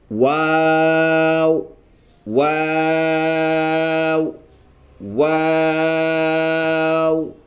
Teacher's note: جب اس میں 2 واو ہے تو اس میں ہونٹ بھی 2 مرتبہ گول ہوتے ہیں، اس واو کو پڑھتے ہوئے اور پھر اس واو کو پڑھتے ہوئے، اور ایک الف کے برابر ہم نے اس کو لمبا کر کے پڑھنا ہے، ایسے ادا ہو جائے گا اس کا واو واو واو۔